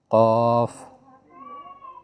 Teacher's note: ये हल्क से अदा होगा